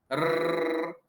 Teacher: हमारी जीभ कहीं टकराती तो नहीं है, लेकिन ऐसा लगता है जैसे जीभ कंपन कर रही है। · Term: प्रकंपित वर्ण